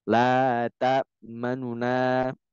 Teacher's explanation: Baru yang kedua roum. Roum itu adalah membaca setengah harokat pada harokat domah di huruf nun.